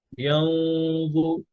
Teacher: এরপরে ইয়াউমা, يوم ينظر المرء ما قدم আচ্ছা খেয়াল করেন, ইয়াউমা ইয়ানজু, এই জটা হচ্ছে হ্যাভি, হ্যাঁ। তো নুন সুকুনের পরে যখন জ আসছে, এই গুণাটাও হ্যাভি হবে, আওয়াজটা ভারী হবে